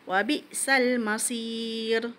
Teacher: Tipiskanlah pada huruf ra tu. Jangan tebalkan. Sebelumnya huruf ya.